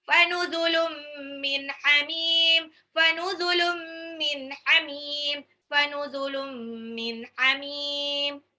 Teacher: Tanwin ketemu mim idgham bi gunah.